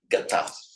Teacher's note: Like, for example, from our root gum, to go, we would have expected to see the past participle ganta, the m becoming a, sorry, the m becoming a n before, so we've expected to see ganta, but it's not. The nasal drops out, and that's where we'll get the word gata